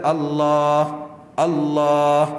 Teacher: Kita Allah, Allah, yang belakang tu yang kita panjang